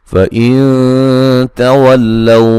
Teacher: نون ساکن کا اخفاء ہے باریک